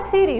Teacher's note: a sílaba tônica é a sílaba final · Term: oxítona